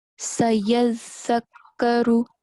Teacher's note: on top of zal, we have shad, right? So we have to stress on it and make a double sound.